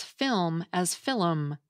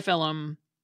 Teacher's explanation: In epenthesis, people insert an extra sound into a word, like how Irish and Scottish people sometimes pronounce film as filum.